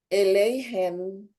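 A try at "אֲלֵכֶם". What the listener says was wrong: Can you give me some more on that kaf there? Yeah, alechem.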